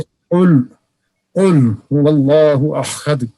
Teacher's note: زبان کا وہ حصہ جو حلق سے ملا ہوا ہے، جب وہ اوپر کے تالو کے نرم حصہ کے ساتھ لگے، اس سے قاف نکلتا ہے